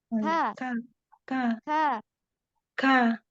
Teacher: Kaf yang ada hamsnya yang ringan.